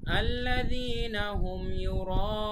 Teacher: আল্লাযীনা হুম, আল্লাযীনা এখানে এক আলিফ টান, হুম ইউরা এখানে 4 আলিফ টান, ইউরা তারপরে উন লাস্টে আবার 3 আলিফ টান